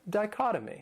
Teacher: that third syllable, it has that schwa, that sound.